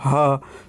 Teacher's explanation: स्वरों के समान यंत्र से होता है ह, बिना किसी रोक टोक के बाहर निकल जाता है हवा ह, तो इस कारण से इसको स्वर तंत्रीय वर्ण भी कहते हैं।